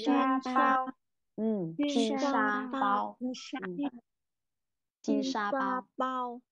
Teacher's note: sh uốn lưỡi lên nhé mọi người